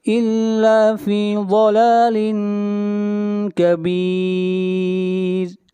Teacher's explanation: ضاد حروف مستعلیہ میں سے ہے، ضاد کو موٹا پڑھا جائے گا